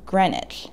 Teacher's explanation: pronounce it greenwich like the second e and the w aren't there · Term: silent letters